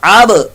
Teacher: با ساکن کے اندر قلقلہ